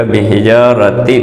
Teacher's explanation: جیم الف مد ہونے کی وجہ سے 1 الف کے برابر کھینچا جائے گا